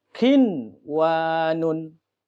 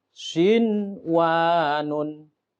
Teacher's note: Asal katanya jadikah satu kalimat bunyanun. Jadi nunnya dibaca dengan jelas. Karena dalam satu kata atau satu kalimat. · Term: idhar